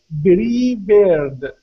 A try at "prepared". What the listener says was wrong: You're saying bees. You're saying bree. Now a P is an unvoiced sound. Okay, so instead of saying bree, it's prepared.